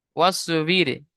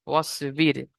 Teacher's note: র সাকিনের আগে জের এসছে, ওই জন্য র বারিক হবে।